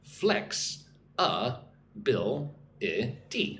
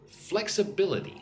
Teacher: Putting emphasis on flex and bill.